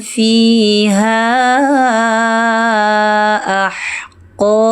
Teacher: Huruf ha seharusnya mengalir, huruf ha memiliki kualitas mengalir.